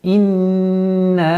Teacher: Назализация у нас в размере 2 огласовок.